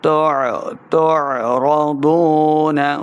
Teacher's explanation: عین کا مخرج ہے، حلق کے درمیان والے حصے سے اس کو ادا کریں